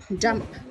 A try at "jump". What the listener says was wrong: Không phải chìa cái môi ra này đâu. Cái môi nhá, kết hợp môi này, môi như này nhá. Cái lưỡi này, lưỡi này, lưỡi. Lưỡi làm âm đờ này.